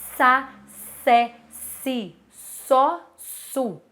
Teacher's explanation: se você fizer só o não tem vibração de prega vocal a e são fonemas surdos